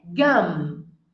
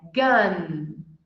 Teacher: o problema é o som do M, porque quando eu falo M, eu fecho a minha boca.